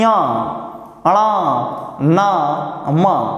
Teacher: पंचमाक्षर को चरित्र करते समय मुख और नाक दोनों से ध्वनि उच्चरित होती है इसीलिए हम इनको नासिक की abhiyanjan भी कहते हैं इसके बाद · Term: नासिक के व्यंजन